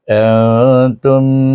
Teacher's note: tapi mulut tak boleh rapat sangatlah eh melepaskan supaya ikhfa tu berlaku